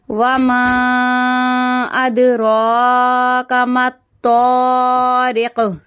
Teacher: یہاں پہ قاف کو ساکن کر دیں گے، یہ کلکلا حروف بن جائے گا